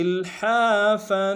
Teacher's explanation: لام ساکن غنہ نہیں ہوگا، ہا کے ساتھ الف مدہ ہے، ہا کو گہرائی سے ادا کرتے ہوئے ایک الف نار میں کھینچیں گے